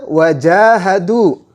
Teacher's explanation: Dalam huruf ja tersebut ada alifnya. Jim berharokat fathah bertemu dengan alif, maka jimnya harus dibaca panjang. Satu alif atau dua harakat.